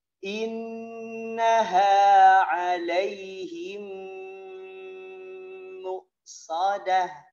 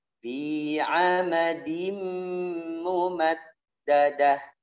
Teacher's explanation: semua mim tasydid, ya, semua nun tasydid ditahan